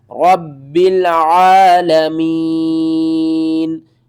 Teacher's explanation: با کے اوپر شد ہے تو جو بھی شد والا حرف ہوتا ہے اس کو ہم نے 2 بار پڑھنا ہوتا ہے اور سختی کے ساتھ پڑھنا ہوتا ہے · را با زبر رب، با لام زیر بل، رب عین کھڑا زبر عا، لام زبر لا، عالا، میم یا زیر میم، نون زبرنا، عالمین، اور وقف کی صورت میں نون کو ساکن کر دیں گے